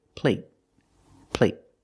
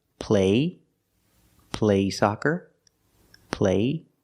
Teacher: they're the same vowel they're the long a but the stop T at the end makes the long a a little shorter